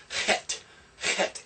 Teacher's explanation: It's kind of a guttural, coming back from the throat. It's not an H, but it's not a K either.